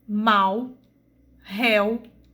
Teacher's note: O U nas duas palavras é uma semivogal porque ele tem o som mais fraco